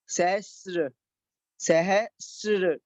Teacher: इसमें त्रा का उच्चारण नहीं होगा, इसमें रा का उच्चारण होगा